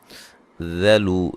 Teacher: ذال کو نرم ادا کرنا ہے، باریک ادا کرنا ہے، موٹا نہ ہو